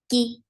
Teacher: When kaf is with haraka, there is no hums. The kaf is very sharp.